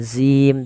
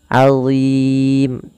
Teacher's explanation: Allah tidak dibaca dengan zim tapi azim, tebal huruf dha-nya, pangkal lidah kita terangkat. Allah, ujung lidahnya sebagaimana zal, azim.